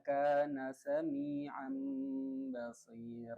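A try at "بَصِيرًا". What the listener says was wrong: Kalau ba tebel. Tetap nyangkel dikit. Basiro. Nah cuman ba-nya doang, kalau si-nya enggak perlu tarik. Kan jaga idbaknya, terus ya-nya itu tebel dong, enggak usah takut.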